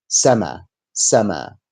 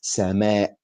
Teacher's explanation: at the end there is a Hamza